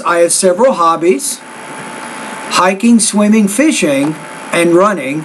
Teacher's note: after hobbies I put a colon and my tone should be a little bit higher with that idea